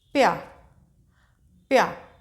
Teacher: ये इसमें आधा पा हल्की सी पा की साउंड है और या की पूरी साउंड है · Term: संयुक्ताक्षर